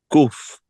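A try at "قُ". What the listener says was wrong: Not kuf. It's just ku.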